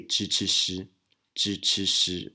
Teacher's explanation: the 知吃诗 pronunciations in Taiwan are no longer retroflex. We just say 知吃诗, 知吃诗, which is the CH or J and SH sounds in English.